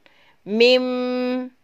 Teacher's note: ini pula berkaitan dengan lidah dan berkaitan dengan bibir di mana huruf mim itu berawal dari huruf bibir kemudian berakhir pada hidung